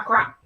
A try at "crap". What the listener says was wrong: I'm pretty sure you said crap, but it sounded like crack, and